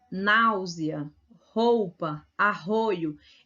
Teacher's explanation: Normalmente o I e o U perto do A, do E e do O, ele não se destaca tanto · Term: semivogais